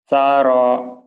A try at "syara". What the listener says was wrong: syaro, syaro, sinnya kurang ya Mas, terus